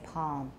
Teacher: it's velarized i don't have alveolar contact